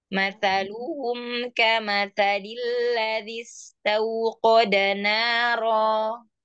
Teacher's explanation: Tetap tipis ya huruf taknya.